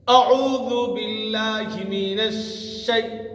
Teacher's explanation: আইনটাকে আনবেন গলার মধ্যে চেপে